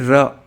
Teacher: प्रकंपित इसलिए बोलते हैं क्योंकि जब हवा हमारे मुख से बाहर निकलती है, ओके, तो हमारी जब जीभ कपकपाते हुए, ठीक है, जब भी हम र का उच्चारण करते हैं तो हमारी जीभ प्रकंपित यानी कपकपाती है